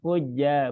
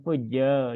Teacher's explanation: Pangkal lidahnya diturunkan, jangan dinaikkan.